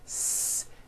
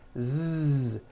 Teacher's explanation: So S has no voicing. S. Z has voicing. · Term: paired consonants